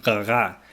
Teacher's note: Rara was probably pronounced with a French gutteral R sound which is close to G